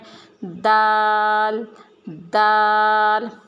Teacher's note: دونوں دانتوں کو کے درمیان میں اس کے جڑوں میں ہم نے زبان کو لگانا ہے، دال دال۔ آگے را، جس طریقے سے ہم نے سا کو پڑھا تھا، نرمی سے دونوں دانتوں کے درمیان میں زبان کو لے کے آنا اور نرمی سے پڑھنا ہے، رال رال۔